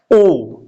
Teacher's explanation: ओष्ठ हमारा बाहर आ रहा है, लेकिन जीभ का जो प्रयोग हो रहा है वो पीछे से ही है।